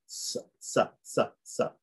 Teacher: then we have the S, which is the dental one, which is like the S in the word sweet, sa. Okay, then we have the aspirate, like the H in hero.